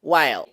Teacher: Y la dark L que les comentaba hace rato, una L como del español, pero con la punta de la lengua hacia atrás, retrofleja, while. No suena igual decir while que decir while.